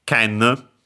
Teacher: More often than not, you'll actually see the Chinese pronunciation ken, tsurugi accented on the last syllable, ken accented, and so actually on the first mora